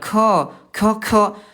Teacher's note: kalau ada udara nanti hurufnya akan tertukar dengan kaf. Ah kaf ada udara. Nanti maknanya bisa berubah gara-gara keluar udara ya. · dari segi udara, dia punya sifat huruf ayah Bunda namanya jahr. Tidak keluar udara.